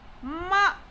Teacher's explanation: starts at a high level and falls sharp at the bottom. It has a rapidly falling pitch, like while saying a command. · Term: falling tone